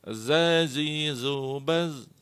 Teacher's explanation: Huruf za ini adalah jahr. Jadi pada waktu melafalkan dia ditahan nafasnya, bukanlah hamz.